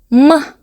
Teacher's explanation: м деген кезде біздің екі ерніміз бір-біріне тиеді, яғни кедергі болады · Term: дауыссыз дыбыс